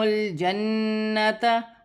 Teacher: نون مشدد میں غنہ کیا جائے گا